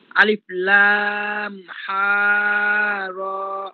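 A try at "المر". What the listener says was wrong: হা নাই তো, হা নাই, মিম মিম, এটা মিম।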